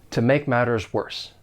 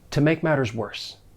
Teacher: I am going to pronounce those t's in matters as a flap T